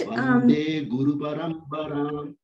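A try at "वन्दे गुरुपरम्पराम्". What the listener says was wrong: One thing to watch out for in Paramparam is that it's a pa sound. So when you chanted, it sounded slightly like a ba, like a b sound. So in some languages, those sounds may change back and forth.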